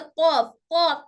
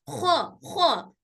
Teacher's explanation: कौफ को हम बिल्कुल नरमी से कौफ कौफ ऐसे बोलेंगे, खौ को आवाज खरखरी आएगी